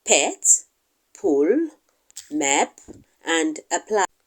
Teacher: P is a plosive sound. You can see the immediate release of air that was initially blocked. There's an immediate release, and that is why we call it a plosive sound.